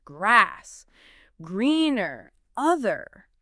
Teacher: your tongue doesn't usually touch the roof of your mouth. Instead, it pulls back and kind of bunches up towards the back of your mouth, forming a slight dome shape. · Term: American R